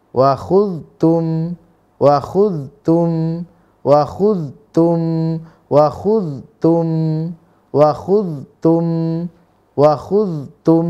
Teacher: maka muzhar dibaca jelas tidak ada dengung tidak ada panjang tidak dipanjangkan tidak didengungkan